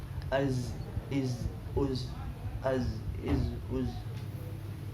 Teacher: dalam mengucapkan lafaz huruf zai, az, maka nggak boleh ada nafas yang keluar.